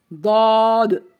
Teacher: داد زبان کی کروٹ اور اوپر کے 5 داڑوں سے لگے تو داد ادا ہوتا ہے